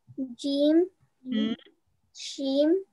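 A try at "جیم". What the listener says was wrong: शीम नहीं, नहीं शीन भी नहीं है, शीन हाँ जीम है, फिर चे है, चे है, हाँ सी एच वाली साउंड है, चे जो है वो सी एच की साउंड देता है, और हे हाँ, और खे हाँ, शाबाश।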